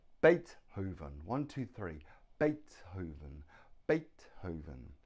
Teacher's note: Beethoven has Beethoven 3 syllables. The stress is on the first syllable.